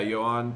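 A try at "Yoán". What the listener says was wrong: no H.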